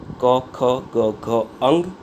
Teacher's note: કંઠ્ય એટલે કે ગળામાંથી જેનું ઉચ્ચારણ થઈ શકે